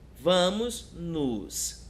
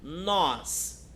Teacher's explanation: O nos é um som mais fraco, então nós, com certeza, ele vai levar o acento.